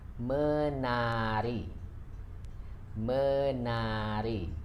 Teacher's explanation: Here we can see that we omitted the T sounds, so the words becoming menari, not mentari.